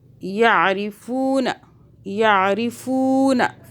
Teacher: فو کو کھینچ رہے ہیں کیونکہ واو ساکن آ رہا ہے فا کے بعد